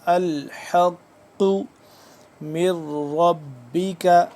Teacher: حا حلق کے درمیانی حصے سے